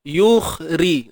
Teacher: Matikan kha, tebalkan dia. Terangkat pangkal lidah.